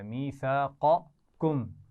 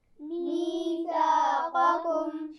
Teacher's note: اور قاف موٹا پڑھا جائے گا، اور اس کے بعد باریک کاف بھی ہے میثاقکم. تو ان دونوں کا خیال رکھنا ہے، آپس میں ان دونوں کو مکس نہیں کرنا.